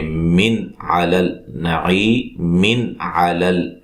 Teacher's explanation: یہ نون تنوین کا اظہار ہوگا، غنہ نہیں کریں گے